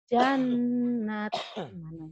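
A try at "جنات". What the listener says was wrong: Jannah, nanya panjang. Nanya panjang, Bu. ada yang berdiri, Bu.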